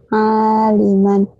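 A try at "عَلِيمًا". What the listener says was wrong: Yang panjangnya lamnya. Kau kan nggak bindeng. Kok dibindeng-bindeng ini suaranya?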